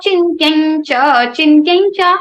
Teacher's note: Next, if Anuswara sound is followed by cha, cha, ja, jha, means after Anuswara, the letter or the letter comes cha, cha, ja, jha, or the word starts with cha, cha, ja, jha, then the Anuswara sound will be like nya